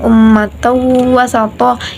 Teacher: ada bacaan tanwin bertemu dengan wawu maka bacaan Idgham bighhunah